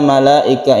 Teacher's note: dibaca mad wajib muttasil sampai dua setengah Alif atau sama dengan 5 harokat